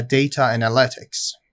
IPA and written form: ˈdeɪtə əˈnælɪtɪks (data analytics)